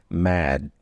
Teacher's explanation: Voice carries over into the D, and I don't aspirate it at the end.